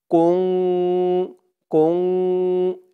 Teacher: নাকের ভেতরে লুকিয়ে গুন্না করে পড়তে হয় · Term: ইকফা